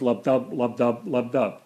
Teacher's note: the heart goes lub-dub, lub-dub, lub-dub. It goes unstress, stress. So I have just made an iamb here with the unstressed syllable, which is the nut, followed by the bolt, lub-dub.